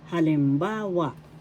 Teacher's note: First syllable ha, second syllable lim, third syllable ba, fourth syllable wa. Halimbawa. Third syllable has the accent.